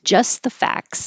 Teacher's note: instead of facts k s t s just skip the T and say facts